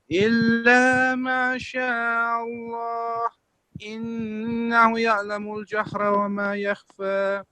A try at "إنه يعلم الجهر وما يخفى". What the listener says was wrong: There is a vertical, an inverted dhamma here. So you prolong it for 2 seconds. You said innahu. Innahu.